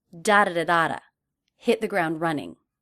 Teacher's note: and run will be the most stressed